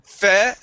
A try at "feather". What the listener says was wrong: Okay, so you're starting off right now with your tongue between your teeth, saying feather.